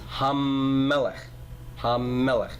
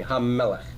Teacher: now what goes inside the mam of Melek a doggish forte you're gonna double that that first consonant of the noun